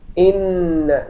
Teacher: this sound of ghunna is coming from the nasal passage